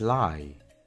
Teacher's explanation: termina con una vibración en nuestra garganta y termina con un sonido I